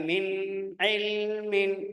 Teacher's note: Tapi min ilmin min ada dengung kecil.